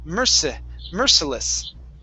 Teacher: So the stress is at the very beginning